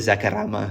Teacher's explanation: He pronounces it Zacarama, like he rolls the R. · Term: rolling R